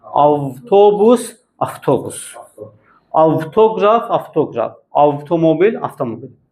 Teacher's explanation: VT yanaşı gələn sözlər yazılışdan söhbət gedir. VT yanaşı gələn sözlərdə necə tələffüz edilir? FT kimi.